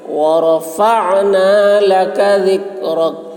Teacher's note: عین کی آواز حلق سے